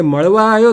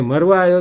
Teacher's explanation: ઉત્તર ગુજરાતના જે ભાષકો છે એમને ળના ઉચ્ચારણમાં બહુ તકલીફ પડે છે, એટલે ળની જગ્યાએ એ ર જ ઉચ્ચારે છે. એટલે મળવા આવ્યો તો એની જગ્યાએ મરવા આવ્યો તો એવું જ બોલે.